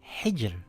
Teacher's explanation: The letter before that has a kasra. It reads as hijr with a light Ra.